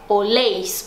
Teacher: Mesmo acontece com vosotros ou vosotras, que é oléis, porque a sílaba tônica não tá no começo e sim no final